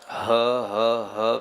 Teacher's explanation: आप इस हक शब्द के उच्चारण से डरे नहीं, वात भी उत्पन्न होगी और वह पूरी सभी धातुओं को सही स्थान पर समायोजित करके ले जाएगी। ह जोर से हा की ध्वनि कंठ से आघात पहुंचाते हुए उत्पन्न करें। वह ह आ में न बदल जाए, ह ह ह बीच में आता रहे।